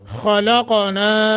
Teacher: خا کو بھی موٹا، قاف کو موٹا لیکن قلقلے کے ساتھ ، خلقنا نون کے آگے الف ہے ایک الف کے برابر